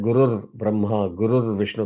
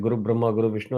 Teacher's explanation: So, by applying a Visarga rule that I will talk about in a minute, you have substitution of Visarga by the Akshara Ir